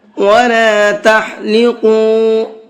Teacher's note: بڑے قاف کو منہ بھر کے پڑھتے ہیں، تو اس کو منہ بھر کے پڑھیں گے۔ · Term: بڑا قاف